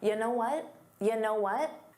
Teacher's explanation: So it sounds like one word. You know what may have been difficult to hear because it becomes unstressed.